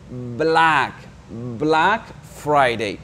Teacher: c'est une voyelle qui est un peu longue un peu plus long que d'habitude